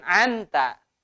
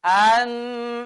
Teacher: membaca nun di dalam idhar bi ghairi gunnah. Jadi tidak ada dengung.